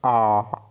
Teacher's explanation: मुख द्वार जो है पूरा खुलेगा और जीवा जो है नीचे हो जाएगा, मतलब आ, ठीक है, आ उच्चारण करके देखिए आप भी, आ। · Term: बड़ा आ